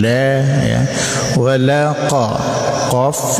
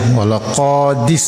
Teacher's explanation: qaf itu huruf yang ada di pangkal lidah ya